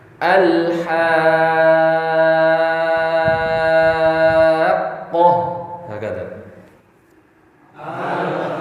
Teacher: Qaf ketika masuk perpindahan ke ha ke qaf itu dihentak. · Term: hentakan